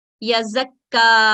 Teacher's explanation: फतह इशबाया के साथ हम 2 सेकंड का वक्त देते हुए तशदीद को अदा करेंगे